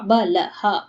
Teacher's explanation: ಲ ಮುಂದೆ ವಿಸರ್ಗ ಅದಕ್ಕೆ ಹ